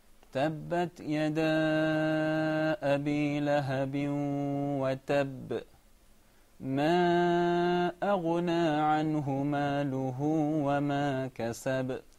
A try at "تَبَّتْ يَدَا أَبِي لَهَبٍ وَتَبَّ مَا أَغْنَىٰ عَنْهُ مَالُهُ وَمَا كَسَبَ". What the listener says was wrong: A little bit longer.